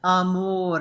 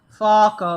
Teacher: amore is closed falco is open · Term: open and closed vowels